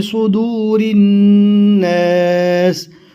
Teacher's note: صد کو موٹا اور پور پڑھنا ہے